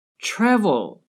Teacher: Yes, the first syllable is stressed, the TRA. Travel. The last syllable with L at the end is not stressed.